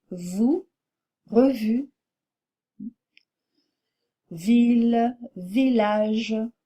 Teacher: Dernier son consonantique compliqué, le son V, qui est labio-dental et qui est très différent du son B, bilabial.